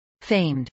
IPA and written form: feɪmd (famed)